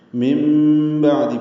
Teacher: نون ساکن کے بعد با آنے کی وجہ سے اقلاب ہوا ہے نون کی جگہ میم پڑھیں گے